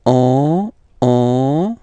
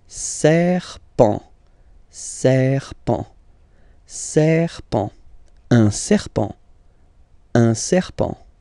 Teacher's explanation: final T, not pronounced, and then you get this EN, okay, nasal as well